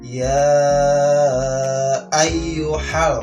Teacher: hukum bacaannya adalah mad jaiz munfasil ya. Berapa? 5 harokat atau 2,5 alif.